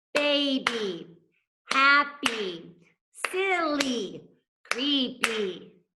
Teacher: Two syllable words, they end in a Y, but you can hear, it makes that same sound as our long E